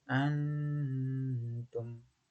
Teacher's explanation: Nun mati bertemu dengan huruf ta, sehingga dibaca dengan samar. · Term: ihfa